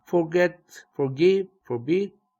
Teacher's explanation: for로 시작하는 단어도 for에 액센트가 없다